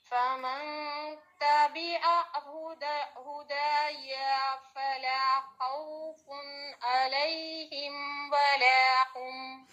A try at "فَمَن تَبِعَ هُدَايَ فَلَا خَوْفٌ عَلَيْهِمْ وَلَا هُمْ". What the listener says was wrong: اب دیکھیں ہدا یا، آپ نے یا کو لمبا کر دیا، اس کو سرکل کریں.